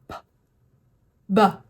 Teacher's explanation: my lips are going together and then they're popping open